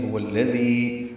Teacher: یا مدہ ہے، دو حرکات لمبا کریں گے